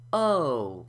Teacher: It starts with the lips slightly rounded and the tongue halfway raised to produce the O sound. And then it glides in to the U sound, where your lips are rounded a little bit more and your jaw is closed a little bit more. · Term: diphthong